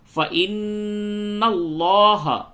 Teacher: نون پہ تشدید ہے، غنہ کریں اور لام کو پڑ کر کے پڑھیں